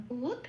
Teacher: দয় একটা যুক্ত অক্ষর দ আগে আছে, হসন্ত লাগিয়ে অর্ধ দ করে আগের অক্ষর বয় হস্যর সাথে জুড়ে উচ্চারিত করলাম বুধ। ধীটা যেমন আছে তেমন পড়ে রইল।